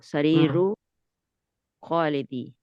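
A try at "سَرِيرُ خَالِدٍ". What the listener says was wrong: खालिदी नहीं करेंगे, दुन है तो दिन करेंगे। यहाँ पे यहाँ पे दू था ना, यहाँ पे यहाँ पे जेर हुआ था, एक पेश था तो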